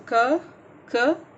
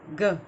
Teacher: same जगह से pronounce हो रहा है, लेकिन देखिए एक वॉइसलेस है और दूसरा वॉइस्ड है